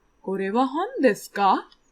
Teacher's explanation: the ka is turning the sentence kore wa hon desu into a question with a rising intonation